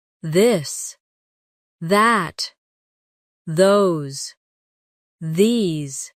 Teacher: Now practice the softer version of th where you let your tongue touch your teeth lightly but use your voice